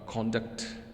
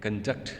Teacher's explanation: for the case of noun, the first syllable is stressed, and in the verb, it is the second syllable that is stressed